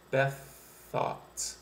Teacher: the TH at the end of Beth and the TH at the beginning of thought, you can just blend those two sounds together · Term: same consonant blends